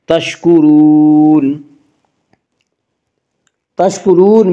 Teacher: اس کا قاعدہ یہ ہے کہ را کے اوپر زبر اور پیش آئے تو را کو پر پڑھا جائے گا، را کے نیچے زیر آئے تو را کو باریک پڑھا جائے گا، یا را کے اوپر پیش ہے اس سے را کو پر پڑھیں گے